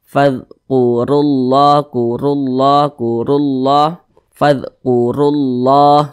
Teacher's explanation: maka ketika kita mengucapkannya, pangkal lisan kita itu naik terangkat ke atas. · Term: dibaca tafkhim